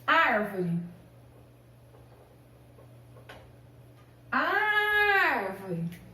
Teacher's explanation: Antepenúltima sílaba mais forte